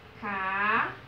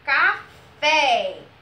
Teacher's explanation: a sílabazinha mais forte que a gente pronunciou foi o fé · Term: sílaba tônica